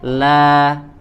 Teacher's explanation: di situ ada alif ya mad tabi'i, kita baca dua harokat